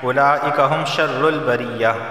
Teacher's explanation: ایک ہی لفظ کے اندر مدہ اور حمزہ دونوں جمع ہو گئے ہیں، لازمی 4 الف کے برابر اسے کھینچ کر پڑھنا ہے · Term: مد متصل